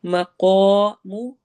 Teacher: क़ाफ को मोटा पढ़ना है और अलिफ मद्दा करनी है